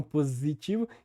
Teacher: que é feito sem aquela palatalização então é positivo e também o s que entre vogais no português brasileiro e no português em geral é sonorizado ou seja começa um som de z